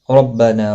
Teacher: را زبر کی وجہ سے پر پڑا جائے گا